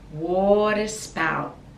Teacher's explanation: the T we don't pronounce, we just put the tongue at the top